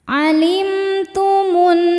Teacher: Cara bacanya alif lam lewat, tidak dibaca, masuk langsung ke nun atau disebut dengan idgham syamsi. · Cara bacanya berdengung, tahan dengungannya kurang lebih 2 harokat. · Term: gunnah musyaddadah